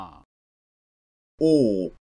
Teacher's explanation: Close mid back rounded vowel